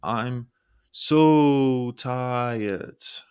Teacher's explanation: Holding so at the same pitch to sound drained or tired. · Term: held pitch